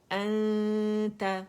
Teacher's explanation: حمزہ فتح نون سکون ان تا فتح تا انت, نون اخفاء کی ہے, نون کو مکمل چھپانا ہے